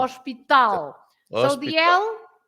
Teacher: you pronounce, you stress hos, and we stress tal